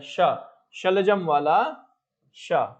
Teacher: श हमारा जो है ये तालु से उच्चारित होता है ना